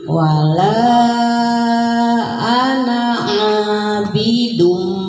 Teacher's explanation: Jadi ditahan dunnya tidak dun tapi dum. Kemudian didengungkan.